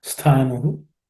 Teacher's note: That stha, the tha is again second letter in the tha varga, so it has to be aspirated.